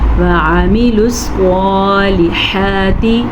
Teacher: صاد کو پر پڑھنا ہے، صاد حروف مستعلیہ میں سے ہے، لام کو لمبا نہیں کرنا کیونکہ لام کے نیچے زیر ہے۔